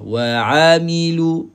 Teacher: Huruf ain adalah tengah halkum. So kita hanya gerakkan halkum sahaja. Lidah letakkan di bawah.